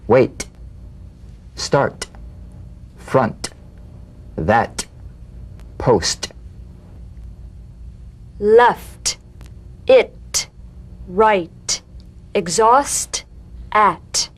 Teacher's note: the unvoiced T tongue front palatal stop consonant cognate to the D the same staccato springing action as the